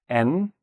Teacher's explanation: It's a vibrated sound. It's a voiced sound.